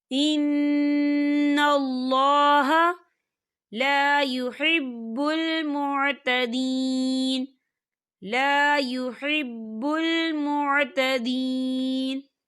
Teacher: یہاں پر نون مشدد ہے تو یہاں پر غنہ ہوگا